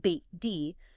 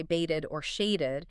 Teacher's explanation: You clearly hear the ed as its own distinct syllable.